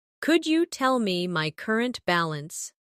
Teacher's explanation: Could you becomes could ya in faster conversation